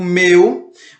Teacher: vocês percebem que o E fica mais forte e o U fica mais fraco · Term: ditongo decrescente